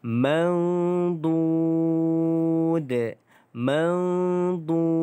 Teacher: Dengung 2 harakat, kemudian panjangkan 4 harakat, kemudian qalqalahkan huruf dal. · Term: qalqalah kubra